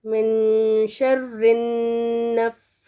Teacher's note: نون پہ بھی 2 کاؤنٹس ہونا، نون مشدد پہ